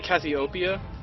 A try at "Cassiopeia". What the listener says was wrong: Seemed like you added another syllable.